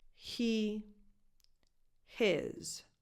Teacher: the vowel in the word his is a lax I, as in the word it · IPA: [ɪ]